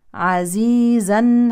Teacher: نقف بالف عوضا عن نون التنوين الساكنه